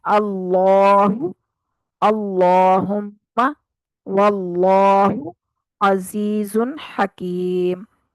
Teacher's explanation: अल्लाह की खड़ी जबर जो है उसको भी खूब दो हरकत जितना मुकम्मल जो है ना वो खींच के अदा करेंगे, मद करके अदा करेंगे।